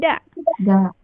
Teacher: ujung lidah bertemu dengan pangkal gigi dari atas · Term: huruf dal